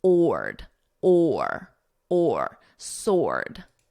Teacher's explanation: Now, sword, notice the W is totally silent